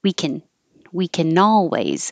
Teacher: the word can as a positive gets shortened to just kin